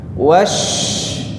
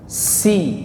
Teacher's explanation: Kalau shin dia menyebar angin, ya, yang deras, tapi kalau sin nggak ada. Dia hanya ada suara desis. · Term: sifat tafasyi